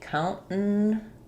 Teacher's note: One, they might use a syllabic N here, in which case it'll sound like count. We'll leave that T as an unreleased T, countenance, and then kind of a short little there, countenance.